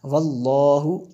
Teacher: یہ لفظ اللہ کو پور پڑھیں گے کیونکہ اس سے پہلے والے لفظ پر زبر ہے